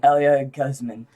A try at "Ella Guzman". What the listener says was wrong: Elia It's not Elia, it's Ella Guzman.